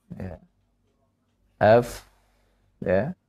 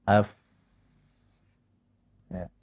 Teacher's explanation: fa keluar dari bibir yang bawah, dari perut bibir yang bawah, F yang kita tempelkan dengan gigi, seri yang atas F, maka keluarlah huruf fa ini.